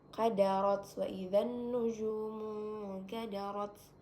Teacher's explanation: nun sukun bertemu dengan kaf yaitu hukum bacaannya ikhfa abad. Jadi dibacanya samar-samar